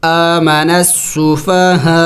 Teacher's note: حمزے کو سائلنٹ کرنا ہوگا یعنی ساکن کرنا ہوگا آمن السفہاء آخر میں حمزے کی آواز نکلنی چاہیے